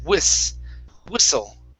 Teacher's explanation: this is an unvoiced s sound instead of wishful with an sh